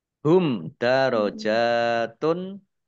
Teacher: mim sukun bertemu dengan huruf Dal bacaan izhar syafawi dibaca jelas